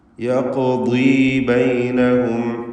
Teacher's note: ഖാഫിന് ഖൽഖല സൂറ നൽകി അതിൻ്റെ സുക്കൂനിനെ ഹറക്കത്ത് പോലെ ചലിപ്പിച്ച് ഉച്ചരിക്കണം.